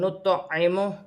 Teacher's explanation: تو ساکن ہے تو تو کو قلقلے کے ساتھ ادا کیا جائے گا